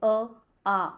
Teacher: आ अगर हम लोग बोलेंगे तो कंठ से वाइब्रेशंस आती है, तो इसका उच्चारण स्थान हो गया कंठ्य। तो अ, आ और ह का उच्चारण स्थान है कंठ्य।